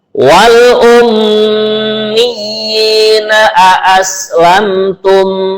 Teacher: di sini mimnya bertasdid dibaca gunnah, mendengung.